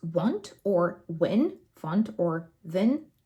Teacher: a blend between W and V, which is another typical feature of the Russian accent